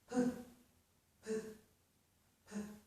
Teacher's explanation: You can feel that release of air if you put your hand in front of your mouth p, when you make the sound. So if you make this sound, p, p, p, you should feel a lot of aspiration.